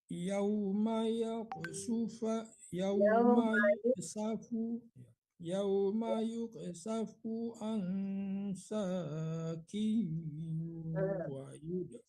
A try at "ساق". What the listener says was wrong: Saqing, tebalkan qafnya Pak. Jangan saqing, saqing.